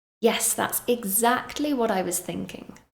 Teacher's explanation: "Yes, that's exactly what I was thinking." And again, pay attention to my intonation and also the words I stress. I really want to emphasize that I agree with this person, so I stress the word exactly.